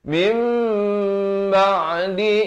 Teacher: Datang selepasnya huruf ba, ditukarkan bunyi nun kepada bunyi mim, kadar panjang dua harakat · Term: hukum iqlab